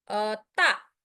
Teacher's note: And the fourth tone, ta, starts at the top, then falls sharp or like falling